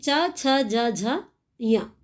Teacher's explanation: च हम बोल के देखेंगे तो हमें पता चलेगा कि च का उच्चारण स्थान तालु से होता है